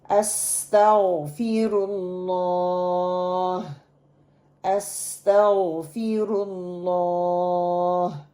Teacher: غین کے مخرج کو آپ نے دیکھنا ہے اور آپ کو موٹا پڑھنا ہے، اللہ کی شد کو پکڑ کے رکھنا ہے اور 2 کاؤنٹ لمبا کرنا ہے.